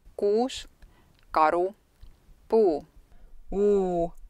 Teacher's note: это видео показывает как произносить эстонский у эстонский у это обугленные гласные заднего ряда верхнего подъема при произнесении этого гласного язык расположено высоко в задней части ротовой